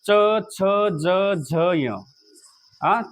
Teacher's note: त्यानंतर च, छ, ज, झ, य हे सगळे शब्द जे आहेत ते तालव्य आहेत. म्हणजे हे शब्द म्हणताना तुम्हाला तुमची जीभ टाळूला लावावी लागते, त्याशिवाय तुम्ही हे शब्द म्हणू शकत नाहीत.